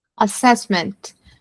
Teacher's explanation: Stress on the second syllable